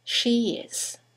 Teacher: there's a semivowel y that links the vowel at the end of she to the vowel at the beginning of is